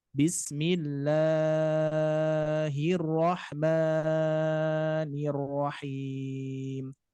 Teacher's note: terlalu panjang membaca mad 2 harokat